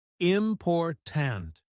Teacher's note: in the word important, the stress is on the second syllable